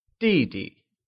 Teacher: Younger brother translates to 弟弟, which is pronounced using the falling tone.